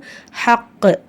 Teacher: சுக்குன் வச்சு நிறுத்தும்போது அந்த காஃப் கல்கலா உடைய காஃபா மாறிடும் அப்ப ஹக் அப்படின்னு அசைச்சு அந்த ஆயத்தை நம்ம நிறுத்தணும் ஹுவ ஹைரு இந்த